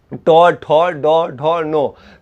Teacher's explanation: तो कहाँ से बोलते हैं, जीव जो है तालु से और ऊपर, जीव अब पूरा मुड़ जाता है, तो तालु से ऊपर जाके टकराता है। अगर मान के चलिए समझने के लिए बताते हैं कि हमारा मस्तिष्क जो है बीच में अगर यहाँ से पतली सुई डालेंगे तो मुख में जहाँ पे निकलेगा उस स्थान को मूर्धा कहते हैं, तालु से भी और ऊपर।